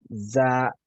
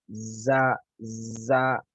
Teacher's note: तो सीटी की आवाज़ अभी आप देखें हम पहला लफ्ज़ अदा कर रहे हैं ज़ा, ज़ा तो देखें आपको एक ज़ शुरू में ज़ुबान की जब लफ्ज़ की अदायगी कर रहे हैं, तो लफ्ज़ की अदायगी से पहले एक सीटी की आवाज़ सुनाई देती है, एक सुरीली आवाज़ सुनाई देती है